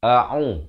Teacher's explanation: Yang pertama a makhraj di pangkal kerongkong, ain di pertengahan kerongkong, dibaca 2 harakat.